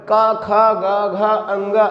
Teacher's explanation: ये कंठ के द्वारा उच्चरित होते हैं, इसीलिए इनको कहा जाता है कंठ व्यंजन।